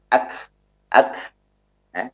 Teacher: Jadi kaf ini memiliki sifat syiddah yang mana suaranya tertahan, namun dia memiliki sifat hamas yang mana nafasnya mengalir. · Bukan bunyi dari suara kaf, namun bunyi dari nafas yang menyertai kaf.